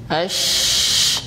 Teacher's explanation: Tafasyi itu udara tersebar di mulut. Ash. Nah, antum bisa rasakan sebaran itu.